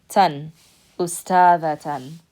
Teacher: anytime you have ta marbuta at the end and there's haraka on it, you're going to pronounce it with the T sound because that's what the letter is.